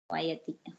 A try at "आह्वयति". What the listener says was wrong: Upasarga there. Ahvayati.